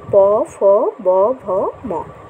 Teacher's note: এই ওষ্ঠ ব্যঞ্জন বলা হয় প বর্গের ধ্বনিগুলিকে ওষ্ঠ ব্যঞ্জন বলে, কারণ প বর্গের ধ্বনিগুলি যখন উচ্চারণ হয় তখন ঠোঁটকে স্পর্শ করে, অর্থাৎ আমাদের ওষ্ঠকে স্পর্শ করে বলে একে ওষ্ঠ ব্যঞ্জন বলে।